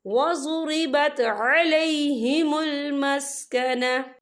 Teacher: या देखिए अलैहिमुल मस्कना, यहाँ पे आपको छोटी सी तोई लिखी नजर आ रही है, तो ये वफ़े मतलब की अलामत है, तो यहाँ पर ठहरना बेहतर है। वफ़ की सूरत में ता जो है साकिन हो जाएगा।